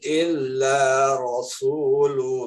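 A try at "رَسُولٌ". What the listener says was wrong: Nah, bunyi sin di sini harus benar-benar terdengar tipis, Pak. Illa rasu. Jangan diucapin di bibir ro, Pak. Rasu, jangan rasu.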